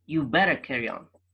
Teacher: the D is missed out